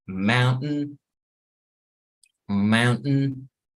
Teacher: Entonces la última sílaba no suena